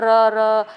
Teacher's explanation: मतलब जिसको बोलने में जीभ को जो है थोड़ा सा टाइम लगता है, र, तो उसमें थोड़ी जीभ आपकी बार बार कंपन करती है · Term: प्रकंपी